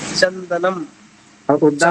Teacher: तो चंदनम के माँ में भी दोनों ओठ चपक जा रहे हैं और उद्दाम में भी दोनों ओठ चपक जा रहे हैं।